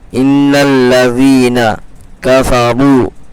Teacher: واو ساکن سے پہلے وا کے اوپر پیش ہے، وا مدہ ہوگا، تھوڑا سا کھینچ کر کے پڑھیں گے